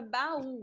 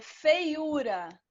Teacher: a gente tem aí o encontro da vogal a com a vogal u né e na hora da separação essas duas vogais elas ficam separadas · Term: hiato